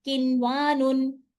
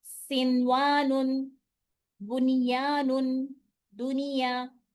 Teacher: ظاہر کر دیا, نہ ملایا نہ اس میں غنہ کیا, اظہار کر دیا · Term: اظہار مطلق